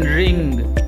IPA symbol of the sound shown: ŋ